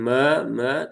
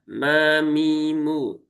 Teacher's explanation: kemudian mimnya tipis ya tipis dan satu harakat